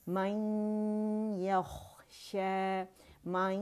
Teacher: ٹھیک ہے, جو ہمارے پاس یہاں مشدد جو ہوگا کیونکہ نون ساکن جو ہے کہ آواز وہ یا کے اندر چلی جاتی ہے 95%, لیکن ادغام ناقص ہوگا کیونکہ غنہ باہر رہ جاتا ہے